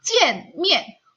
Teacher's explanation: Jadi nada keempat ini kita akan bacanya menjadi sama dengan nada ketiga. Sama dengan nada ketiga, yaitu dia bacanya hanya setengah.